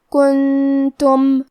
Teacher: کلمت کنتم میں بھی نون ساکن ہے پھر حرف التا ہے. کیونکہ یہاں حکم الاخفاء ہے تو ہم یہ حکم کو غنہ کے ساتھ ادا کریں گے